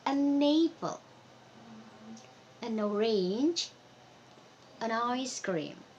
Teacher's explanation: kita bisa link antara an dan juga kata setelahnya